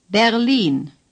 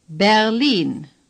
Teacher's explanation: The R is hardly pronounced at all.